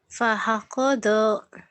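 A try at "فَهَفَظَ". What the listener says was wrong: pahafazo, bukan pahakodo. Pahafazo.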